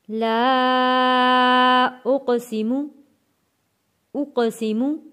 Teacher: قاف حروف قلقلہ ہے، آواز پلٹ کر آئے گی